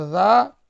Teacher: اسے ایک الف یا دو حرکت کے برابر کھینچ کر پڑھیں گے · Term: حروف مدہ